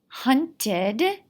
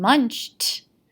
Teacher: hunted has the id ending and munched sounds like the t ending